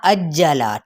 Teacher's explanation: حمزہ زبر آ کی ساؤنڈ اب نکلے گی اور اس کو جیم کے ساتھ دباؤ کے ساتھ ادا کرتے ہوئے جیم کی حرکت کو لمبا نہیں کریں گے